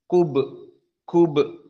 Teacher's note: Kemudian ayat yang berikutnya ataupun al-kubre, perhatikan ba as-sakinah. Maka dia qalqalah as-sughra karena di wastil kalimah.